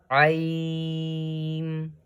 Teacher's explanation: Ain is also read from the bottom of the throat.